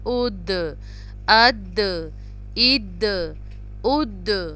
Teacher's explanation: حمزہ زبر دال اد، اب یہاں پہ بھی دال کے اوپر جو ہے جزم ہے تو یہ قلقلہ کا لیٹر ہے، اس پہ ہم قلقلہ کریں گے، پش کر کے پڑھیں گے، اس کو تھوڑا سا دبا کر